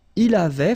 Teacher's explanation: Tu avais. Il avait, final T not pronounced